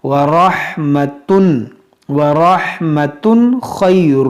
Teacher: یہاں پر اظہار کریں گے یعنی یہاں پر غنہ نہیں کریں گے